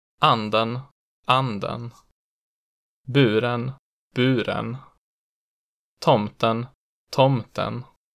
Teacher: both accent one and two which are instead distinguished by timing the peaking accent one is immediate while in accent two the pitch Rises into Peak on the stressed vowel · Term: type 1 a